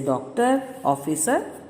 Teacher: यह आ तथा ओ के बीच की ध्वनि है।